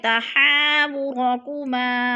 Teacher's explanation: وتشتکی الی اللہ تحاورکما، تحا پہ پھر الف مدہ ہے، الف مدہ کو ہم نے ایک الف 2 حرکات کے برابر لمبا کر کے پڑھنا ہے